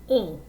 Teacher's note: the sound of the vowel is like oh but you're sending all that air and all those vibrations through your nose so it's kind of like having a cold pono okay so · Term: very nasal vowel sound